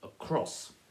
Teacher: And across sounds way more sensible than across, which sounds like a strange sport or something. So across is stressed on that second syllable, across.